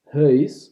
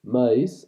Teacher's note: In Dutch, it is something a little bit different, huis, with more rounding of the vowels